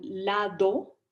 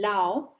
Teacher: hacen elisión de oclusivas Sonoras inter vocálicas